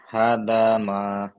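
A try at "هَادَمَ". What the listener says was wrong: হাতে আলিফ আছে। হাদামা,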